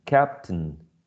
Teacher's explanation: Sometimes even the schwa is elided. The schwa disappears, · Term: syllabic